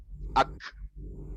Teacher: Kalau kita sukunkan jadi ak, bukan ake. Ak. Nah, dia keluar udaranya.